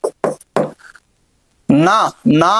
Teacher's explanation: ఇని ఇని అనేటువంటిది తాళవ్యానునాసికం తాలవ్యానునాసికం ఆ అన అనేది మూర్ధన్యానునాసికం మూర్ధన్యానునాసికం న నా న అనేది దంత్యానునాసికము దంత్యానునాసికం